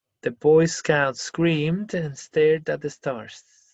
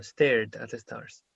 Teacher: Screamed es una D leve, termina en una D. Y esta igual, stared.